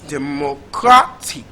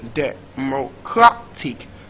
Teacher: the syllable with the primary stress is the third syllable